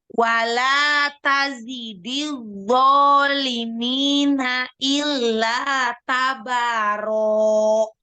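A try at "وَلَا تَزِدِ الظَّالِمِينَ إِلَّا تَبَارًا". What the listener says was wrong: Tanya tipiskan. Illa tabaro. Ya, ro-nya 2 harokat ya. Ukti, pokoknya jangan panjang-panjang bacanya.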